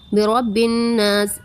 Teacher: برب الناس، الناس میں الف ساکن سے پہلے زبر ہے اس لیے الف مدہ ہوگا اور نون مشدد بھی ہے تو اس میں غنہ بھی ہوگا